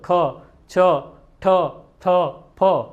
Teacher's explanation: હવાનો વધારે ઉપયોગ થાય છે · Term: મહાપ્રાણ